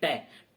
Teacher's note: हम बोलकर देखेंगे टे बोलते हैं कि हमारी जीभ जिस स्थान को जाकर के टकराई है वह स्थान की मूर्धा कहलाता है।